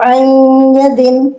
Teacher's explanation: नून या में मिल जाएगा नून को या में चेंज कर देंगे यानी मर्ज कर देंगे। ये नून साकिन है और ये या है।